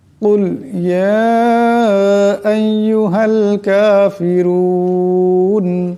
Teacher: কুল এখানে বড় কাফ আছে, কিন্তু আমরা কুল ছোট কাফে উচ্চারণটি করি।